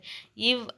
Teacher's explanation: இவ் அப்படிங்கறது பல்லி இதழ் இன மெய்